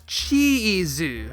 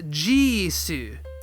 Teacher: swaps out the unvoiced “chi” for the voiced “ji” and the voiced “zu” for the unvoiced “su.”